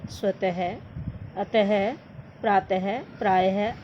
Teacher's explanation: हिंदी में विसर्ग का उच्चारण समाप्त हो चुका है। इसे भी अब ह के रूप में ही बोला जाता है।